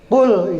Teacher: makharijul hurufnya makhrajnya itu dia ditenggorokkan dilaklakan beda dengan Kaf kalau Kaf itu sama seperti kita mengucapkan huruf ka ya qulah